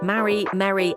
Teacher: in American English, marry, merry, and Mary sound the same